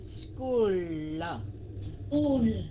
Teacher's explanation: School là âm n, còn cuối cùng là âm l phải cong lưỡi